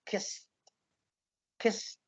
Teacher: Have you noticed how weak the teh sound at the end is?